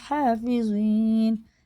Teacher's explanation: زوئی پر ہوتا ہے، منہ بھر کے پڑھا جاتا ہے